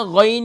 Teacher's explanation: اکثر اسے غلط پڑھ کر کے پڑھتے ہیں غائن. غائن شروع میں کھینچنا نہیں ہے